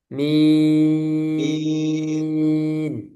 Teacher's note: madnya jangan sampai masuk hidung